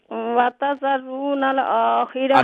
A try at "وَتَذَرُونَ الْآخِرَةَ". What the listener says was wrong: نہ یہ دیکھیے ایک ہے اور ایک ہے ہاں جو ہے نا اس کو فل ماؤتھ سے نہ نکالیے.